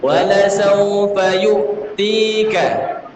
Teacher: Harakat ain itu adalah sukun. Ya, ketika sukun maka aliran suaranya kedengaran.